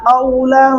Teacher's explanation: कौ होंठ गोल हो जाएंगे